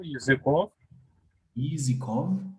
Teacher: L'accent toujours sur la dernière voyelle dans ce mot